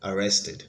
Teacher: arrested has the stress on the second syllable and it has three syllables